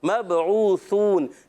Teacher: سا کو سیٹی کے بغیر پڑھنا ہے، بعض بچے سا کو سین جیسا پڑھتے ہیں، مبعوثون کر دیتے ہیں، نہیں، مبعوثون۔